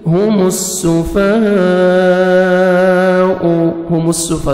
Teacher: سین کو اچھی طرح سیٹی کے ساتھ پڑھیں گے. ہاں کو اپنے صحیح مخرج سے ادا کریں گے.